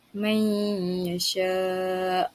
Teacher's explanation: Okey. Manakala Imam Khalad pula dia membaca secara dengung, secara idgham seperti kebiasaan imam lain yang baca